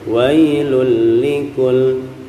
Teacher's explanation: ketika tanwin berhadapan dengan lam, ini cukup kita tempel saja, nggak usah terlalu lama ya, cukup wailul likul ya.